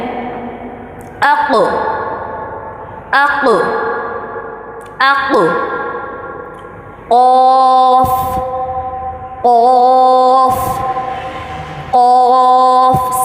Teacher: صحیح ہیوی کر کے منہ بھر کے ادا کرنا ہے